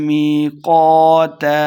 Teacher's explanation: می یہ مد ہے تو 2 حرکات لمع کرنا ہے، قاف کو موٹا پڑھیں گے۔